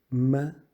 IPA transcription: m